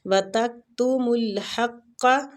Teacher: ہا وسط الحلق سے، اور قاف مستعلیہ حروف ہے، اس کو پور پڑھنا ہے